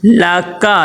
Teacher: لکا، یہ کاف کش والا کاف ہے، کش والے کاف کو باریک ادا کرتے ہیں، موٹا نہیں کرتے ہیں